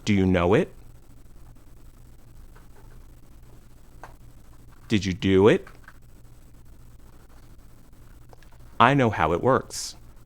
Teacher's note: We add a short W sound when the first word ends with the sound O, know it, ooh, do it, or ow, how it.